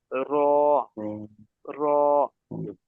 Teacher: উপরে তালুর সাথে লাগিয়ে উচ্চারিত হবে র